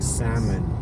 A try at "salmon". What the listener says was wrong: It's a silent L. Salmon. It's pronounced as salmon.